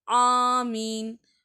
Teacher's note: ஆனா ஆமீன் அந்த அலிப் பாருங்க அலிப் வந்து நான் தொண்டை கீழ இருந்துதான் எடுக்கறேன்